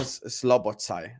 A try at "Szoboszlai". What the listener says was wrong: How do you keep saying it wrong? There's no L at the start of his name. It's Szoboszlai. You just Salobo with the L. Salobo.